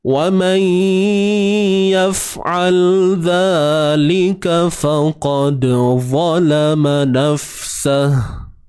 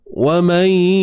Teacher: وَمَنْ idgham, masukkan bunyi nun ke dalam ya bi gunnah dengan dengung. وَمَنْ pastikan ada bunyi sengau kat hidung kita. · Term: Idgham bi gunnah